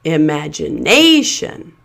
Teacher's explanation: So the second syllable match is pronounced as a secondary stress syllable. It's not quite as loud and long as the primary stress syllable, but it still has that clear vowel sound and it still stands out more than the weak syllables around it.